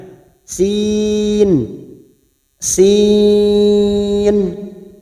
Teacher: ujungnya pada hitungan keenam harus terasa bunyi Nun sukunnya · Cara membacanya, ya mad alifat, panjangnya 2 harokat, ya sin, sin kita panjangkan 3 alif atau 6 harokat atau 6 ketuk. Sin, ujungnya pada hitungan ke-6 harus terasa bunyi nun sukunnya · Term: mad lazim harfi muqaffaf